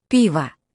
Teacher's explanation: Emphasis on the first syllable.